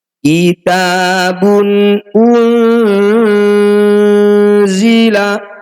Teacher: Za ini disebut bacaan Ikhfa tepatnya yaitu ikhfa ausat cara bacanya bunyi nun sukun kita dengungkan dua harakat saat dengung lisan kita sudah ada di huruf Za